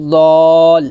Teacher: আমাদের দদের 4 আলিফ টান দিয়ে লামকে ধরতে হবে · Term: মদ্দে লাজিম কালমি মুসাক্কাল